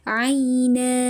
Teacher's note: Maka cara membacanya adalah dengan dihilangkan bunyi tanwin digantikan dengan kita panjangkan nunnya dua ha harakat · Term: mad